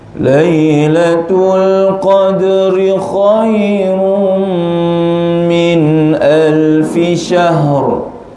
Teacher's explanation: Biasakan kha masuk ya tebal, jangan baca khai, khainya tebal.